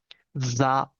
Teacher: Lo que tienen que hacer es, bueno, algo que se dice bastante es em, vibrar, ¿no? Hay que vibrar dentro como si hubiese una mosca o una abeja y a eso le pones vocal. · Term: S sonorizada